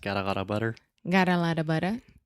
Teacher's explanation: if you say that really fast got a lot of butter got a lot of butter that is the flap T